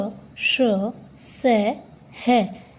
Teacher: सभी का उच्चारण कर रहे हैं तो हमारे मुख से हवा बाहर निकल रही है, तो इसलिए इनको ऊष्म व्यंजन कहते हैं